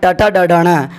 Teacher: ट वर्ग का उच्चारण स्थान मूर्धा से होता है, इस कारण ट, ठ, ड, ढ, ण मूर्धन्य कहलाते हैं।